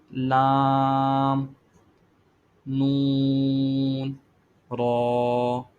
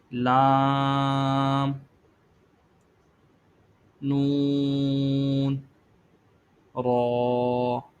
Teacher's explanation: یہ حروف آپ دیکھیں کہ یہ زبان کا کنارہ اور یہ جو دانتوں کی یہ جو جڑ ہے یہاں سے، یعنی مسوڑا ہے، یہ مسوڑے کے جہاں سے دانت نکل رہا ہے یہ دانت کی جڑ ہے۔ زبان کے کنارے کو دانتوں کی جڑ پر لگا کر یہ حروف ادا کرنے ہیں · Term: حروف طرفیہ